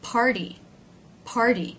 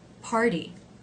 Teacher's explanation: when the letter t comes after the r and before a vowel that in this case too it is sometimes pronounced as a d